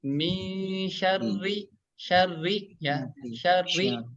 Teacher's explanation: Huruf ro yang berharokat kasroh dibaca tipis ya. Tarkik ya.